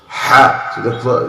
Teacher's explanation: the ha, it comes from the middle of your throat